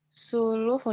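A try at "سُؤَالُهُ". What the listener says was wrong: Soaluhu, soal itu kurang hamzah ya.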